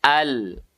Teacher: Adna hafatil lisan ma'al lissatil asnanil ulia. Ujung tepi lidah bertemu dengan langit-langit depan berdekatan dengan gusi. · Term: huruf lam